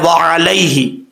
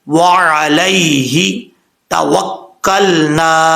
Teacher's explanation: اور یہاں پر ہے وعلیہ، اس کو علیہ نہیں پڑھنا، لام یا زبر لئی ہوتا ہے. عین کو اپنے مخرج سے ادا کرنا ہے، حمزے کی آواز نہیں آنی چاہیے. وعلیہ توکلنا.